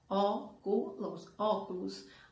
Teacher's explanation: óculos a antepenúltima sílaba então é uma palavra proparoxítona